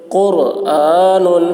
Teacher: رائے ساکنہ سے پہلے پیش ہے اس لیے را کو پر پڑھیں گے